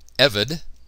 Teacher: Notice the accent on the first syllable.